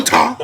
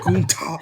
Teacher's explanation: the more you say it, there's more of an emphasis on the last syllable